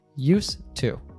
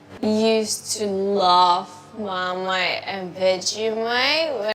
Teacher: because we have two T sounds together here, used and to, we just pronounce one of them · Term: connected speech